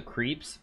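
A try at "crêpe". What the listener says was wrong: it's crepe. It's pronounced crepe. What is this creep, you stupid Americans? You don't even know how to say I know it has a little hat. It has a hat on the letter, but you can get it right, you know?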